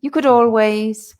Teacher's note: The stress comes on the always, yeah? You could always. And your voice is going up there. Your intonation yes, is rising.